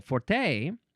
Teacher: Um, you could also say forte. You can emphasize the second syllable